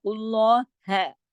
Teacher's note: ہا کو آگے سے باریک رکھنا ہے اور لمبا نہیں کر دینا. ہا کے ساتھ الف نہیں لگا دینا، ہا کے ساتھ الف نہیں ہے، ہاں جتنا ہے بس اتنا پڑھا جائے گا.